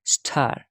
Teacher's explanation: t is aspirated in star